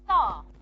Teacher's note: I'm not going to aspirate the T because it's preceded by the sound s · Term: no aspiration